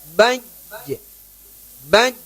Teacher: Ditekan makhrajnya di apa? Di tengah lidah kita ketika kita mengucapkannya.